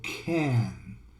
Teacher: in America they put a schwa before the ah so they go can